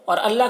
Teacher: اور اللہ کلام کو باریک پڑھیں گے کیونکہ اللہ کلام سے پہلے زیر ہے